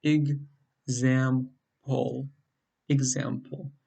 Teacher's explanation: in the word example, it's the second syllable that's stressed. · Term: word stress